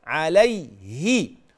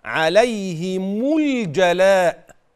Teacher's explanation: طيب اوصل كده كلمة عليهم بما بعدها، إن وقع بعدها ساكن فعليك أن توضح الكسر جيدا في الهاء فتقول عليه، وميم الجمع تضم وصلا هكذا عليهم الجلاء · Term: كسر الهاء